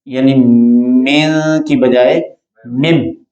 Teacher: جب نون ساکن کے بعد با ہو تو اسے اقلاب کہتے ہیں، میم سے بدل کر پڑھا جائے گا میم، یعنی مین کی بجائے مم، اور غنہ کیا جائے گا میم بعدی میثاقہ۔